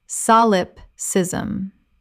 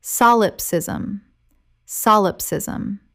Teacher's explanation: Four syllables with the stress on the first.